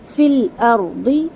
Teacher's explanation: اور نہیں پڑھنا، واو کی ساؤنڈ نہیں لانا. فی الارض اور فل لام کو ہلانا نہیں ہے.